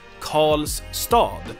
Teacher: into a retroflex consonant that sounds like call so that tongue the tip of your tongue flexes back and you get one sound · R and L usually in Swedish get merged into a retroflex consonant that sounds like Karl.